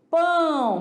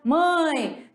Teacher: o som ele sai parte pela boca parte pelo nariz